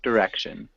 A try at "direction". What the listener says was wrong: Instead of saying die, we would say direction. In the U.S. we would say directions. So it's got that short-ish I sound.